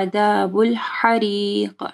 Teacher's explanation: عذاب الحریق، ہا کو واضح پڑھنا ہے اور قاف کے اوپر جو ہے کلکلہ کرنا ہے